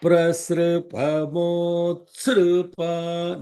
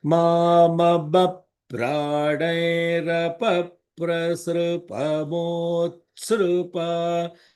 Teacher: No holding on the sru because it is a vowel. The ra dot below, the r with the dot below is a vowel.